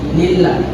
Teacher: Lillahi itu termasuk kepada lam jalalah yang dibaca tarqiq. Dibaca tarqiq karena tipis.